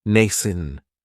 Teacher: It has the long A sound, nascent. That second syllable has that schwa